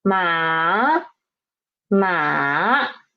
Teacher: This is third tone from starting from the pitch two and drop to pitch one and then rise up to pitch four